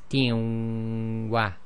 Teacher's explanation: the Noon Saakin in the tanween has been dropped, and the kasra on the ta is being merged into the waw, so it's tin wa. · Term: merged directly